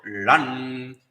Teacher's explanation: the akara is also nasalized and nakara is also nasalized